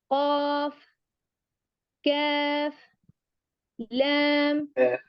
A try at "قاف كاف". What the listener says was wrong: لا ننطق الفاء في قاف وكاف، يعني الفاء وكأنها يعني محتشمة. لا نقول كاف، يعني فاء ضعيفة جدا.